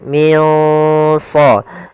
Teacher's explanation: sad termasuk huruf ya tebal dan huruf istiala maka dia samarkannya agak ditebalkan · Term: ikhfa